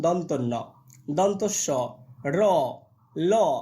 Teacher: জীবাগ্র দন্ত মূলকে স্পর্শ করে সেটাকে আমরা বলছি দন্তম মূলীয় ব্যঞ্জন